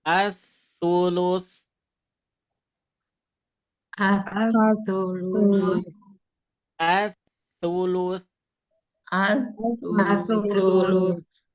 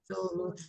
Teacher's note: pengucapan sa ini ujung lidah ke ujung gigi ya